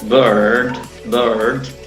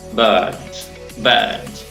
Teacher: A veces en Estados Unidos usan mucho esta R, esta ra, y dicen bird, bird. Y en Inglaterra no. Sería simplemente bird, bird.